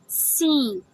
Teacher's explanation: سین سیٹی کی طرح ہم پڑھتے ہیں، سیٹی کی آواز ہوتی ہے، اس میں دانتوں کے درمیان سے ہوا نکلتی ہے